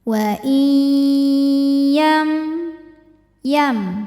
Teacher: nya amunah karena ada nun sukun menghadapi huruf ya cara bacanya huruf nun masuk atau dileburkan ke ya disertai bunyi dengungan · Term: idgham bi gunnah